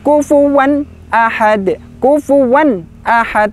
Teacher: tanwin bertemu Hamzah Bacanya adalah inhar jelas